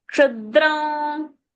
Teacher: That Kshudram, let the Anuswara in the nose come.